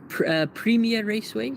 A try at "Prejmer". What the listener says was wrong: You pronounce it Prejmer. That's a J.